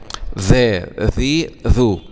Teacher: مراعاة مخرج الذال طرف اللسان، طرف اللسان مع أطراف الثنايا العليا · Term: حرف الذال